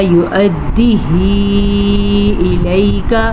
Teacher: مد کو کھینچ کے پڑھیں گے 5 سیکنڈ تک. اور یہاں پہ یا لین ہے تو یا لین کو ہم نرمی سے پڑھیں گے بغیر کھینچے پڑھیں گے.